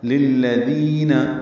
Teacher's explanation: لام باریک ہیں، ذال نرمی سے ادا ہوگا. ذی یا مدہ ہے، دو حرکات لمبا ہے.